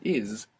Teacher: English speakers should be aware that maybe they feel themselves pronouncing a zed because many times we have an s in English like in the word is and we pronounce a zed